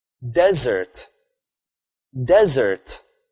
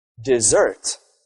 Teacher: You put the stress on the first syllable of the word.